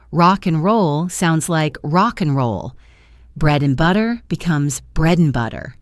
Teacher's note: The D sound in and also frequently vanishes, especially in common pairs. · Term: elision